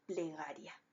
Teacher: En nuestra última sílaba tenemos una vocal cerrada átona, que es la I, y una vocal abierta, que es la A. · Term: diptongo